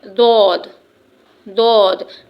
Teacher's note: जबान की करवट ऊपर के साइड दांतों से लगेगी तो हुफ द अदा होगा।